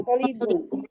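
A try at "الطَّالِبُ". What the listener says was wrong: Toknya panjang.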